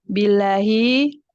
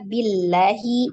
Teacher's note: Billahi lamnya dibaca tipis karena sebelumnya kasroh.